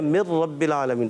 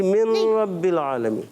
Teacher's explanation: यार नून भी तो आ रहा है, नून की आवाज़ नहीं आएगी क्या? नहीं बिल्कुल भी नहीं आएगी। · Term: इदगाम विला गुन्ना